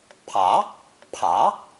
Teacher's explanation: The voiced B sound has changed into a voiceless P.